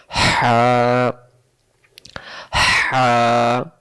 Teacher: লম্বা হা হলকের মধ্য থেকে শো করে পড়তে হয়